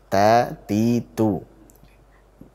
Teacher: Jadi setelah ditekan, tertahan suaranya, kemudian nafasnya mengalir ya, bocor suaranya. Dan kaidah pada hams ini, selama kita mengeluarkan huruf tepat di makhrajnya, maka hams akan keluar dengan otomatis, begitu ya kaidahnya.